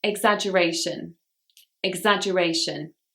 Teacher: This word has 5 syllables and the stress is on the 4th syllable.